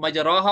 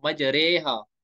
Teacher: ना हमें रॉ पढ़ना है ना री पढ़ना है, बल्कि हमें बीच वाली कंडीशन पढ़नी है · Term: इमाला